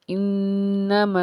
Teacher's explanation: अलिफ से पीछे ज़बर होने की वजह से एक अलिफ के बराबर खींच के पढ़ा